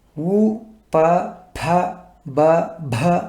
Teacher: రెండు పెదవులు దగ్గరగా లేదా కలిస్తే పలకబడేటివి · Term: ఓష్టాలు